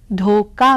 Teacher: ख की जगह क का उच्चारण हो गया क्योंकि ख के पास की अल्पप्राण ध्वनि है क और इसीलिए